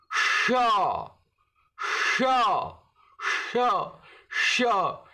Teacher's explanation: तालु के बिल्कुल शुरू में कंठ के पास से जीभ लगाकर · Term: मूर्धन्य श